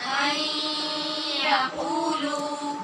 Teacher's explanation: نون کو ہم نے یا میں مدغم کرنا ہے، ادغام غنے کے ساتھ ہونا ہے، اور قو اور لو دونوں کے بعد واو مدہ ہیں، لہٰذا ان کو لمبا کریں گے۔